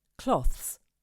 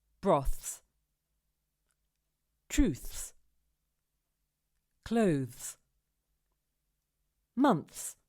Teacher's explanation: the third that is what we call a difficult consonant cluster after we've placed the tip of the tongue between the teeth we need to bring it up behind the top teeth and hiss a little to make the s sound and we have to do it all in one go cloths